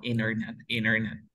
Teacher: la T no se pronuncia porque tengo N, T y sonido vocal